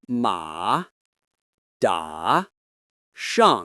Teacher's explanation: One way to practice this is to imagine cutting the sound with a downward stroke. Start high, then bring it down smoothly but firmly. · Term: fourth tone